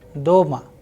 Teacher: In case of doma, again the sound of o is higher than the a.